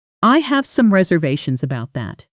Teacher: "I have some reservations about that." The stress falls on the key syllable of reservations and again on that, almost like two little peaks in the sentence.